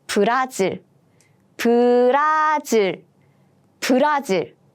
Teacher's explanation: But in Korean, we don't have Z sound, no Z sound. So all the Z sound become just kind of like J sound.